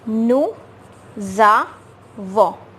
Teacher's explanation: We will form a liaison. We will link these two words, this S and A. So it will become nous, za, it will become za, and this is va.